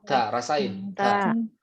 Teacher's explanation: lidah bertemu dengan antara gigi seri atas dan gusi atas. Ya, di tengah-tengahnya. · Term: huruf ta